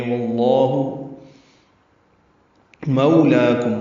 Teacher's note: مو وولین ہے، ہونٹوں کو ناتمام گول کریں گے، لام پر کھڑا زبر ہے اس لیے آگے ایک یا کا نشان بنا ہوا ہے.